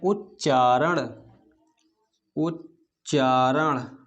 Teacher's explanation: ता और चा आपस में मिलकर क्या बनाते हैं, आधा चा बनाते हैं